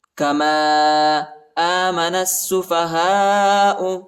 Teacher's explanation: نون کو سین کے ساتھ ملانا ہے، الف اور لام نہیں پڑھا جاتا. ٹھیک ہے، سین پر شد آیا ہے.